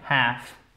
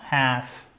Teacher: Prononcez pas le L.